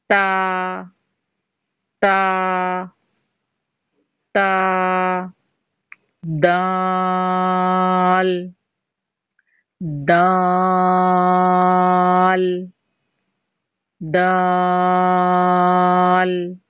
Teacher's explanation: تا اور دال میں زبان کی نوک جو ہے بالکل باریک نوک والا حصہ لگے گا اور نوک کے پیچھے کا موٹا حصہ تو میں لگے گا۔